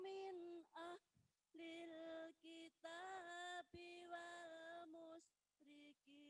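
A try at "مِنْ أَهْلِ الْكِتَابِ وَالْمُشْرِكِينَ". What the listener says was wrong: Sudah bagus, nanti dilatih di rumah ya. Haknya kurang ditekan.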